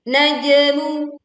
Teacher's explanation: Ada jim sukun, kita membacanya dengan memantulkan suaranya dengan suara yang terdengar miring.